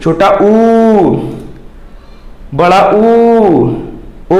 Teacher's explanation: आप इन स्वरों का उच्चारण करेंगे, जीभ कहां जाएगी, पीछे की ओर भागेगी, बैक साइड में। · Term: पश्च स्वर